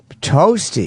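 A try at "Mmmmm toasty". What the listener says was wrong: No, you didn't separate them. It says separate them.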